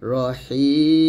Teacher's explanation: শেষে আসার কারণে আমরা মিমটাকে সাকিন করে ফেলবো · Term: আরজি সাকিন